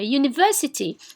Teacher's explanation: we take stress on the third syllable from the end